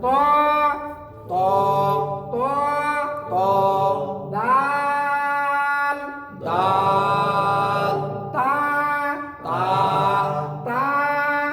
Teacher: জিহ্বাটা কোথায় যাবে? ওই যে দাঁতের গোড়ায়, জিহ্বাটা দাঁতের গোড়া যাবে।